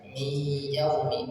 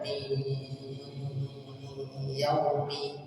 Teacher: Bi ghunnah, idgham bi ghunnah, dengungkan 2 harakat. Masuk ke ya, mi, masukkan hidung sambil didengungkan · Kemudian mi yaumil jum'ati, dan nun sukun ketemu dengan huruf ya, mi yaumi, maka didengungkan 2 harakat. Nun sukun ketemu ya, maka didengungkan 2 harakat.